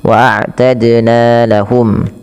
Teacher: ada qalqalah pada lafal dal yang disukunkan. Waadna lahum ya dannya dipantulkan karena ya qalqalah.